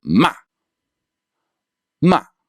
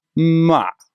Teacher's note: It's not just a straight line down from first tone level to third tone level. It actually starts slightly above first tone and then goes all the way down to third tone. So this is higher than first tone and then to your lowest point, your third tone level. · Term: fourth tone